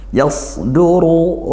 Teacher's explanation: ro berharakat damah dibaca tebal tafkhim